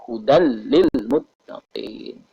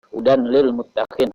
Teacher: Dalam hukum tajwid, tanwin bertemu lam, idgham bila gunah. Dimasukkan tanwin itu hilang, tapi bunyinya lam.